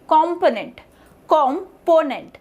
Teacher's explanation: So PO is the primary syllable here.